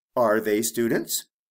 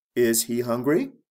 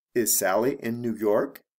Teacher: with the question, my intonation goes up at the end of the question